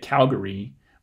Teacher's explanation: I say it Calgary with three syllables, and the first one is stressed. The second syllable has a schwa in it. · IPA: [kǽlgəri]